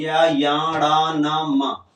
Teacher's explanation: मुख से भी बोले जा रहे हैं और नाक से भी बोले जा रहे हैं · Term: नासिक